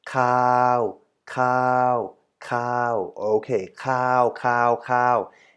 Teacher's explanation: it's still in the line or within the line of middle tone · So cow, cow, cow is the middle tone. · we have a long A vowel completed by a sonorant at the end. So this syllable K, A, or K, A, and V results in the syllable cow, cow, cow.